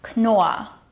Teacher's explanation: Knorr is pronounced with the hard K sound, followed by a long O sound and two R sounds, which are actually silent Rs.